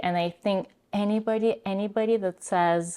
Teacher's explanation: Here she is doing her glottal stop. She's stopping her voice before anybody,